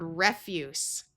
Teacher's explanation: Here we have the word refuse with a short e sound and the unvoiced s sound.